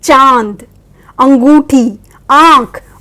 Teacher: इनका उच्चारण मुंह और नाक दोनों से होता है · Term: अनुनासिक